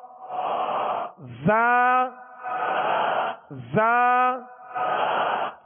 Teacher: زبان کی نوک اور دونوں دانتوں کے اندرونی کنارے، اس سے زا سین صاد 3 حروف ادا ہوتے ہیں